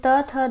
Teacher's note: तो त थ द बोलते समय हम दादों का प्रयोग करते हैं, यानी हमारी जीवा है वो दंत को टच करती है, तो इस तरह से ये जो ध्वनियाँ हो जाएंगी वो दंत ध्वनियाँ कहलाएंगी